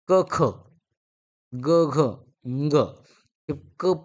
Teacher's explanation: पहिले दोन व्यंजन हे कठोर दुसरे दोन व्यंजन हे मृदू व्यंजन आणि शेवटचा जो असणार पाचवा तो अनुनासिक आहे हे आपण या